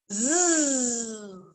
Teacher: I can feel the sound of this letter vibrating on my teeth and tongue when I make it.